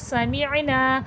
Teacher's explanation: सीन में सफ़ीर की आवाज़ आएगी